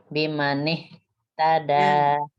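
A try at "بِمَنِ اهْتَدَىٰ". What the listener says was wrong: Nggak boleh bimanih putus, nggak boleh putus. Harus nyambung ke ta tapi nafas terus tuh keluar.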